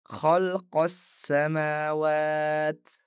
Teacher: pada contoh kedua saya menghubungkan qof langsung ke huruf sin dengan membaca khalqos samawat. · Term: alif lam syamsiyah